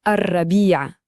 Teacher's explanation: Pour bien le dire, le R est un peu roulé et on insiste sur le I à la fin. Écoutez bien, hein, Arrabia, c'est ça.